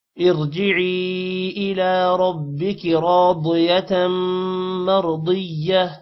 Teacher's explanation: مرضیہ را موٹا ہوگا یہاں پر بھی. ضاد بھی موٹا ہوگا اور تا کنورٹ ہو جائے گا ہاں میں وقف کی وجہ سے